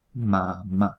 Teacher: La M es un sonido que existe en español, por ejemplo, pues en la palabra mamá se pronuncia simplemente juntando los dos labios y por eso se llama bilabial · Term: nasal bilabial